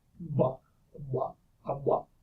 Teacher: think of pronouncing a B and just make sure to maintain the voicing all throughout